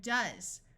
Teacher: also notice the S uses its second Sound Of Z